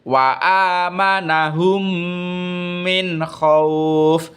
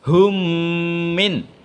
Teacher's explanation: hanya mim itu nanti dibaca idgham mutamas silain cara membacanya adalah memasukkan huruf mim mati itu ke dalam huruf Mim berikutnya disertai hunnah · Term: idgham mutamasilain